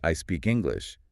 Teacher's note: But if I say I speak English with a nice curve on the last word, it sounds friendly and open.